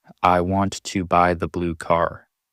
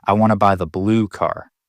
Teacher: all fast, all quiet, almost mumbled. And then boom, blue car. Slower, clearer, stronger. Because that's the new information.